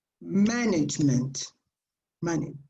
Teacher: The stress is on the first syllable. When the words are long in English, you normally stress here on the first one, management.